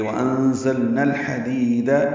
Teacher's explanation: اب نون کو الحدید کے لام سے ملائیں گے